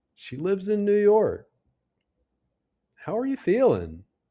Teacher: Notice how the pitch goes down at the end? · That falling intonation shows we're making a statement or asking for specific information.